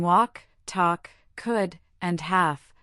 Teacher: In walk, talk, could, and half, the L completely disappears from pronunciation.